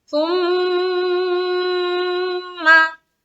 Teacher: सुम्मा, सुम्मा, मीम मुशद्दद का गुन्ना करेंगे। सुम्मा, मीम को फिर जल्द छोड़ेंगे, क्यों, क्योंकि मीम के ऊपर जबर है